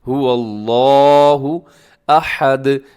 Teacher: اسے کھینچ کے پڑھنا ہے لفظ اللہ کو، کیونکہ اس کے اوپر کھڑا زبر ہے، اور اس کے علاوہ اس کو اپنے موٹا بھی پڑھنا ہے۔